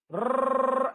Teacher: जिसने भी बचपन में खेला है र ऐसा गाड़ी चला के खेला, तो रा कंपन करती है, इसलिए इसको प्रकंपित बोलते हैं। इसके बाद एक नाम और दे रहा हूं उसको, लुंठित।